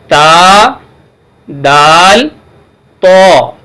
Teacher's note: ان تینوں کا مخرج زبان کی نوک اور سامنے کے اوپر کے دانتوں کی جڑ ہے